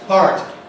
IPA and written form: hɑːrt (heart)